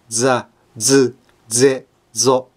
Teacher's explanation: lidah harus lebih dekat ke gusi atas daripada sa, se, se, so. Sampai hampir tidak ada celahnya. Sehingga lidah mulai bergetar. Pergetaran lidah akan kedengaran hal yang sulit, tapi bukan.